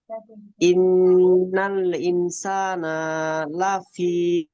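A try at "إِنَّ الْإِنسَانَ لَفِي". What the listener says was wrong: নুনের উপরে জবর টান হয়ে যাচ্ছে, ইনসানা সিন টান হবে, নুন টান হবে না। ইনসানা,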